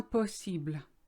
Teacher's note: it's very light l on the end